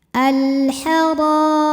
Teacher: Cara membacanya adalah dibaca dengan tebal. Lidah tegang ya, tidak rileks. Al-Hara. Ra hukumnya adalah mad tabi'i zahiri karena ada alif yang didahului harokat fathah. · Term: tafkhim